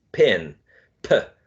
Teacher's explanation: This feature of aspiration is, you know, producing the sound with a burst of air. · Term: aspirated